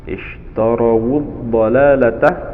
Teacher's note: Ad-dalalata di situ ada alif lam atau lam ta'rif bertemu dengan dhad, disebut dengan idgham syamsiyah, yaitu lamnya tidak dibaca, langsung pada huruf dhad yang ditasydid.